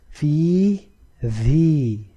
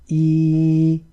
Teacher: So again, the three things that come into play at the same time: sound continuing to run from the vocal cords, lowering of the lower jaw, and the middle part of the tongue being pulled upwards towards the roof of the mouth. Try reciting E, and you will yourself experience that while the sound runs from the vocal cords and your mouth is opened, the middle part of the tongue is automatically raised upwards towards the roof of the mouth. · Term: Ya Madd